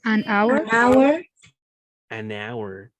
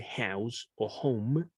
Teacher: la H en ese caso es muda